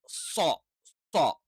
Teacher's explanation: തെറ്റാണ് സ്വ സ്വ അഥവാ ന സ അതേപോലെ തന്നെ സ്വ സ്വ അപ്പൊ നാവിന്റെ ഏറ്റവും പിൻഭാഗം എന്ത് ചെയ്യും ഒന്ന് ഉയർന്നു നിൽക്കും അതേസമയത്ത് നാവിന്റെ ഫ്രണ്ടിലേക്ക് വരുമ്പോൾ ഒരു ബെൻഡ് ആയിട്ടാണ് എന്ത് ചെയ്യുന്നത് സ്വ എന്നുള്ള ഉച്ചാരണം വരുന്നത്